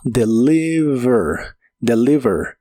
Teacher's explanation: recuerda que la V de inglés es labiodental y vibrante. Suena como deliver.